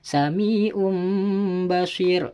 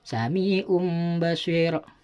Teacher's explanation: Jadi seakan-akan tanwin itu berbunyi mim sukun. Tanwin doma yang pada lafadz sami'un basir itu berbunyi mim sukun. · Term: bacaan iklab, iklab